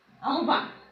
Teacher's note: হয়ের সঙ্গে ব যুক্ত হলে সেই ব মহাপ্রাণ রূপে উচ্চারিত হয়। বয়ের মহাপ্রাণ রূপ হচ্ছে ভ।